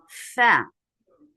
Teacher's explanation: It's when you are bringing your upper teeth to lower lip. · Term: makhraj of fa